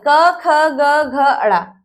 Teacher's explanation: वर्ग, क वर्ग, क ख ग घ अड़ा, यानी कि इनका जो उच्चारण स्थान है वो है कंठ। क ख ग घ न, ये जो आवाज आती है ये हमारे गले से आती है।